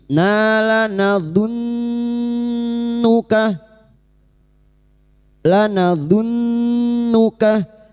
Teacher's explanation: nun yang bertasdid gunna musyaddadah kita dengungkan selama tiga harakat. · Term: gunnah musyaddadah